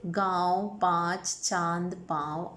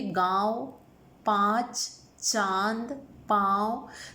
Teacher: अनुनासिक ध्वनि का उच्चारण करते समय वायु मुंह और नाक दोनों से बाहर निकलती है